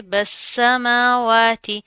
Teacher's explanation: बा को सीन के साथ मिला देंगे, बस समावाती, मीम के ऊपर खड़ा जबर आ रहा है, वाव के ऊपर भी खड़ा जबर है, एक अलिफ के बराबर पढ़ा जाएगा।